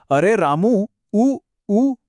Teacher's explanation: यह जो उ लंबा खींचा ना बस यही प्लुत स्वर है।